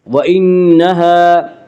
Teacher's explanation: نون مشدد غنہ ہوگا، غنہ کی مقدار ایک الف ہے۔ وَإِنَّهَا، الف مدہ، الف ہمیشہ مدہ ہوتا ہے، الف سے پہلے ہمیشہ زبر ہوتا ہے، الف مدہ کو ایک الف کے برابر کھینچ کر پڑھیں گے۔